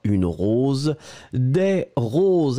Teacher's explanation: on rajoute le S à la fin on ne le prononce pas